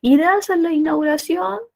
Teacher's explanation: Y es el único enunciado que tiene tono ascendente, el único.